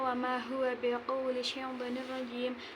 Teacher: Yang pertama mat tabi'i dibaca panjang 2 harokat, yang kedua mat tabi'i dibaca panjang 2 harokat to, yang ketiga idgham bila gunnah, tanwin kasroh bertemu dengan huruf ra dimasukkan tanpa dengung. Yang keempat mat tabi'i.